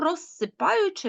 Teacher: звук з стоїть перед глухим І тому розсипаючи ми його чуємо як глухий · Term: уподібнення